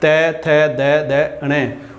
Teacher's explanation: जो जीभ है हमारी वो दांतों से स्पर्श करेगी।